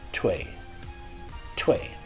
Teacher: You don't want to give the W a really strong W. You don't want to say twee, but a very light W.